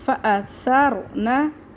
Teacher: بہت سے لوگ پڑھتے ہیں سرنا پڑھتے ہیں، سا کو سین بنا دیتے ہیں اور را کو باریک پڑھتے ہیں